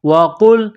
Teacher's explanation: قاف کو لام کے ساتھ پلس کرنا ہے، قاف کو موٹا کرنا ہے